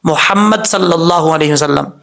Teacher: کہیں ہا بریک کو بھاری ساؤنڈ کے ساتھ نہ پڑھا کریں